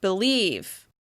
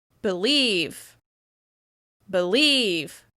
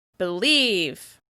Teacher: In this case, we're stressing the second syllable.